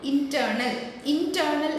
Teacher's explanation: അപ്പുറവും ഇപ്പുറവും light, അതായത് accent ഇല്ലാത്തത് നടുക്കറ്റ് എന്ന് പറയുന്നിടത്ത് ആക്സെൻ്റ് കൊടുക്കുന്നു · the accented syllable comes in between 2 unaccented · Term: amphibrake